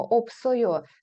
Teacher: при вимові Ось ця с Вона ніби переходить на наступний склад